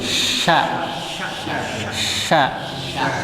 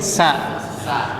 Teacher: shin punya sifat udara mengalir di dalam rongga mulut